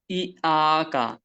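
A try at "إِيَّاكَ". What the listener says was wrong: ইয়াকা হচ্ছে না এখানে। তাসদিদ কে ধরতে হবে, ইয়াকা। আ তো না, এখানে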